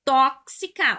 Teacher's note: Tóxica foi acentuada por ser uma proparoxítona. Antepenúltima sílaba mais forte, todas as proparoxítonas, aquelas que apresentam a antepenúltima sílaba tônica, são acentuadas independentemente da terminação.